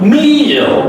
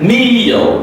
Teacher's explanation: M is a nasal and double E is an E is a long stretch E vowel sound, and then the last L is pronounced as a dark L. The O sound is coming before L.